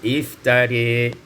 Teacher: imalatu fathatir ra wal alif, diimalakan fathah ra dan alif menjadi iftari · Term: imalah